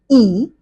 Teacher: It is unrounded because while producing the sound e your lips are not rounded but are unrounded and also it is a long vowel. Hence we describe it as a tense vowel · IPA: /iː/